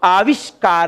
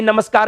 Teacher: और देखो इधर आविश प्लस कार है, क्या रूप बना बताइए, आविष्कार है। स कौन सा आया, मूर्धन्य वाला, जबकि नमस्कार में कौन सा था, स दंत्य वाला